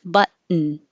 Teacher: you put your tongue in the T position, which is the same as the N position. But and then you just make the noise.